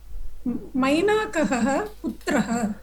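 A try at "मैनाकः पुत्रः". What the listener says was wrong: Mainakaha, there is no double ha. Mainakaha Putraha. Okay, you can see Vriddhi of Mena to Maina, and Kap Pratyaya has been added. Okay, Mainaha could have been also generated, but generally they seem to use Kap Pratyaya, so Mainakaha.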